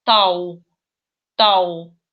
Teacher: когда тоже говорим тау, как будто W слышится в транскрипции